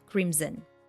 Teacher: I heard this word being pronounced incorrectly with s sound but actually the correct pronunciation is with the z sound